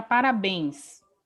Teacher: eu sei que parabéns é uma oxítona, a sílaba mais forte é bens